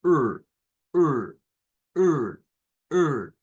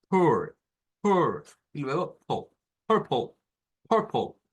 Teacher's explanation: Es como una E abierta, pero hacia más, un poquito más atrás.